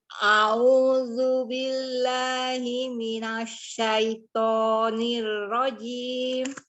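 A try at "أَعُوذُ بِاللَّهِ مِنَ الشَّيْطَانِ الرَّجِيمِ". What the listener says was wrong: Nah, dibuka lagi alifnya. A'udzu billahi minasyaitonir rajim.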